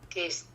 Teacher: the words that end in an S sound in the past, they are pronounced T.